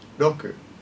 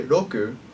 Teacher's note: when I say Roku it's neither an r or an L when you say R sounds in Japanese you don't usually move your lips or your teeth your tongue touches the top of the roof of your mouth rather than your teeth